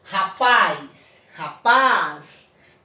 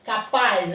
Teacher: eu destaquei no meu tom de voz, eu falei que a sílaba tônica é a última sílaba, né? Capaz, então, paz é a última sílaba.